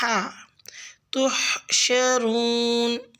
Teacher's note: لفظ تحشرون میں ہا کا مخرج وسط حلق سے ادا کریں